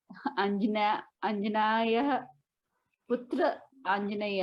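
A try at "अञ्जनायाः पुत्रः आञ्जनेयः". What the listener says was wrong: हाँ, फिर से अंजना याह, तो पूरा अंजना याह। पुत्रः, पुत्र अकेला नहीं है। तो अंजनायाः पुत्रः आंजनेयः, या फिर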